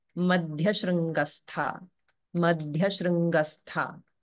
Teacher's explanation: in shrangastha, the r is the r vowel. It's not a consonant. So the shru in shrangastha is not a conjunct akshara.